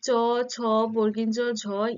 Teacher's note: এই পাঁচটি ব্যঞ্জন ধ্বনি উচ্চারণের সময় জীভের মধ্যভাগ তালু স্পর্শ করে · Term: তালব্য ধ্বনি